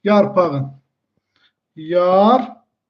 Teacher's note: burada yarpaq sözündə q'dan sonra sait gəldiyinə görə q hərfinə keçəcək, x-ya keçəcək. · Q hərfi keçəcək, x kimi tələffüz ediləcək.